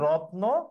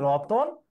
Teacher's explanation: রত্ন বললে তয়ের সাথে কোনো স্বরধ্বনি নাই, রতন বললে তয়ের সাথে অ স্বরধ্বনি আছে